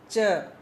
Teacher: ट प्लस श मिला के एक साउंड बनती है च